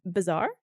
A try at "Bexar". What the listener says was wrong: Bear. The X is silent. BEXAR. Bear. Bexar.